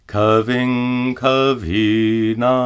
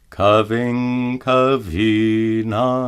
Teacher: Notice that the anuswara is pronounced as a guttural nga.